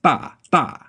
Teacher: And in the case of T in particular, you're going to the vowel so quickly that you're going to skip that puff of air entirely